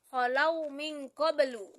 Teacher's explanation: qablu itulah yang berada di akhir kalimat yang termasuk kolkolah sugro yang dibaca pantulannya ringan. Kemudian kolkolah kubro yaitu pantulannya yang memiliki pantulan kuat yang berada di akhir.